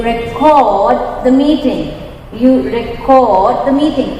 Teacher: It's stressed. Cord is stressed here. This is a verb.